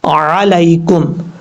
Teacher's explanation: عین کو آپ نے مخرج سے ادا کرنا ہے، حمزہ کی آواز نہیں آنی چاہیے۔